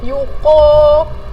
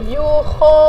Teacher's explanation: jaga-jaga makhraj yang datang daripada kerongkong jangan tertukar dengan huruf qaf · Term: huruf kha